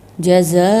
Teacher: الف کے بعد فوراً حمزہ آ جاتا ہے تو وہاں 4 الفی مد ہوتا ہے۔ اس کو ہم 4 الف کے مقدار کھینچ کے پڑھتے ہیں۔